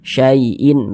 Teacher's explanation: Hati-hati ya ketika mengucapkan huruf lin yang terjadi pada huruf ya sukun, hati-hati jangan sampai condong ke huruf e.